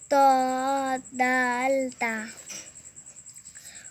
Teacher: জিহ্বার আগা সামনে উপরে দুই দাঁতের ঘোড়ার সঙ্গে লাগাইয়া